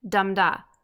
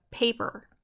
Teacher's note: this metrical foot is made up of a stressed syllable followed by an unstressed syllable as in dum da think of it as the opposite of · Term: trochee